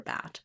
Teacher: getting the correct placement that it's front and not back and that it's open and not mid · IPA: /æ/